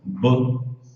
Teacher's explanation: e o K você mata o som do K.